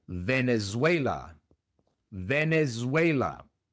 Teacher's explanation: La V es una V en inglés, es labio dental. Se pronuncia como la F, pero con vibración de las cuerdas vocales.